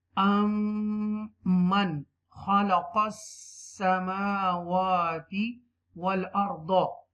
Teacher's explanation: You will stretch a little bit on meme and wow because they both have a standing zabar on them. Okay, and you will read this scene with the extra stress because this scene has a tashdid sign, W sign, and with zabar.